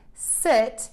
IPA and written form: sɪt (sit)